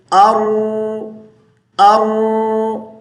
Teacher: را ساکن ہے، اس پہ قلقلہ نہیں کرنا، ساکن کی حالت میں اس کو تھوڑا سا کھینچیں گے